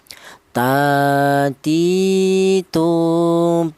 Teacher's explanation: Huruf ta ini kelarnya huruf berasal dari ujung lidah menyentuh pangkal gigi seri bagian atas